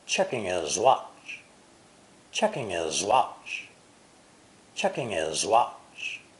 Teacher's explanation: the w of watch is a semi vowel so all three words checking his watch are linked together · He is the first word of this sentence, so the H is clearly pronounced, but the H of his is silent or unpronounced. The W of watch is a semi-vowel, so all 3 words, checking his watch, are linked together.